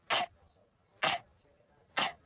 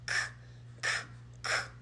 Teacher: The sound is coming from the back of our throat.